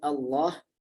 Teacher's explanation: apabila kita tebalkan Allah, maka ia makhrajnya lam ini akan bergeser kepada makhrajnya nun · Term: inhiraf